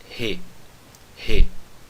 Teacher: como esse som é um som que vem do fundo da garganta, nós chamamos o Re de uma letra gutural.